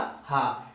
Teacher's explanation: हा का उच्चारण स्वर यंत्रों से होता है, इसलिए इसे स्वर यंत्रीय वर्ग में रखते हैं।